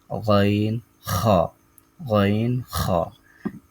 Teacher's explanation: তিন নাম্বার মাখরাজ হলকের শেষ হতে